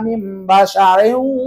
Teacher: Mim jangan dibaca min sebab ada nun mati ke depan ada huruf iklab